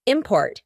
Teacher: in the middle, we have that glottal T